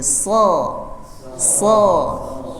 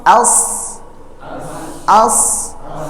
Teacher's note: dia sama dengan huruf sin makharijul hurufnya, tapi ada bunyi tebalnya, sifat tebal yang disebut isti'la menyebabkan dia bunyinya ada u.